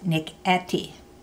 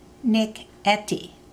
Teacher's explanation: Did you notice the glottal stop between the Nick and the Etty? Notice we didn't say Nick Etty, it's Nick Etty.